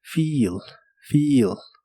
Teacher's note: la doble e de esta palabra se pronuncia como una I larga o doble